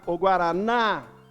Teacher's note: A última sílaba é a tônica, porque ela é mais forte. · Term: sílaba tônica